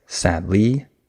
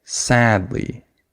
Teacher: I would stress the first syllable I would have emphasis on sad not on Lee I don't say sad L I say sadly right so I